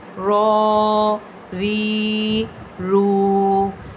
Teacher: کھڑی زبر، کھڑی زیر اور الٹا پیش، اس کو ہم نے ایک الف کی مقدار کے برابر لمبا کر کے پڑھنا ہے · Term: کھڑی حرکات